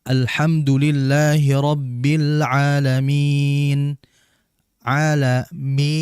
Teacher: Lihat di situ, di situ kan adalah huruf mad ya, huruf mad. Sedangkan huruf mad ini dia makhrajnya itu melewati rongga mulut ya, aliran pernafasan bukan lewat hidung. Sehingga merupakan kesalahan bilamana kita membaca huruf mad atau hukum mad keluar lewat hidung.